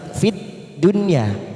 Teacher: Ada huruf nun sukun yang bertemu ya warna merah kita baca jelas tanpa mendengung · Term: idhar wajib